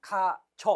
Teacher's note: 가저는 가쥐어 이렇게 발음하지 않고 그냥 가저 이렇게 단모음으로 발음합니다